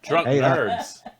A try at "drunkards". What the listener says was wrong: drunk nerds. No, drunkards. drunkards. There's no N. Drunkards.